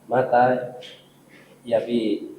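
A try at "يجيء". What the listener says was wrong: Bukan yabi itu. Enggak, itu jim Mas. Bentuk jim gitu. Enggak, itu jim, bentuk jim begitu. Itu ya-nya harusnya kan di atas ya standarnya ya, titiknya.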